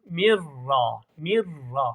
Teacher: Hani nun düştü arkadaşlar ra şeddele okundu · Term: idham bila gunne